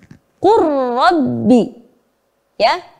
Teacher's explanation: lamnya tidak tampak ya karena udah dileburkan ke huruf ro